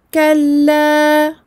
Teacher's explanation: 2 temps sur le lem avec sa fatha. Dans le cas où je m'arrête, 2 temps.